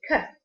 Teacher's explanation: The voiceless k is velar articulation. The back of the tongue articulates with a soft palate to block the airflow before releasing the plosive k.